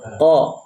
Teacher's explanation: Dan membaca qaf tidak boleh dimonyongkan ketika fathah.